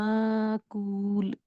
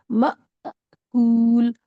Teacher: अगर इसको हमजा माने तो आवाज होगी म, विद जर्क, झटके के साथ, माकूल। क्योंकि साउंड ऑफ हमजा अ है और साउंड ऑफ अलिफ कुछ भी नहीं है, जो पिछला लेटर होता है उसी को स्ट्रेच करके पढ़ते हैं।